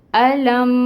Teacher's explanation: لام کے اوپر زبر کی حرکت ہے، 1 کاؤنٹ پڑھیں گے۔ میم ساکن ہے، لام کو میم کے ساتھ ملائیں گے۔